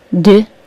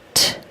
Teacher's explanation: the D sound is voiced, but the T sound isn't